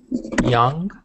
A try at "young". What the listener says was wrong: so you said zhang you said it like a j uh-huh just be careful